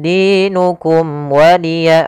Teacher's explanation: ada mim mati bertemu dengan huruf waw, maka suara mimnya harus dibaca dengan jelas, tidak boleh tahan karena dia bertemu dengan huruf waw. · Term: izhar syafawi